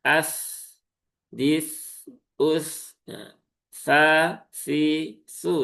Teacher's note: Maka pastikan di sini adalah huruf tsa ya, ada di ujung lidah gigi seri